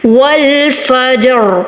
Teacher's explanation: रॉ को हमने मोटा अदा किया, क्यों, क्योंकि इससे पिछले लेटर पर क्या है, ज़बर आ रही है।